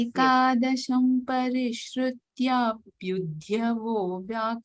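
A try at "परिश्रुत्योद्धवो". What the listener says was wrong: Again, you're saying pyudhya. So, not pyudhya, but pyudha. Not dhya. Dha. Only dha. Pyudhya is coming. You're saying pyudhya. Dhya means dha and a ear.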